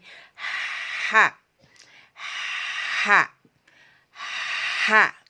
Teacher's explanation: Ya, memang jadi ketika kita melafazkan sifat huruf hijaiyah H yang harus kita lafazkan banyak udaranya atau nafasnya atau anginnya yang keluar, sehingga penyebutannya menjadi H, H, H, seperti itu. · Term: hamas